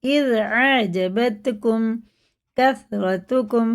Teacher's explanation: اذ زال جو باریک ہوتا ہے، جیم اور زال کا مخرج الگ ہے